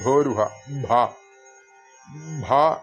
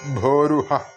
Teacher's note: ഭ മഹാപ്രാണനാണ് അവിടെ അല്ലെങ്കിൽ ഘോഷ ശബ്ദം